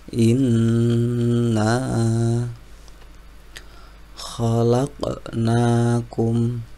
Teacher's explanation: di situ ada qof sukun maka wajib dibaca Qalqalah karena letaknya di tengah-tengah kalimat maka cukup qqalahro saja khqnakum selanjutnya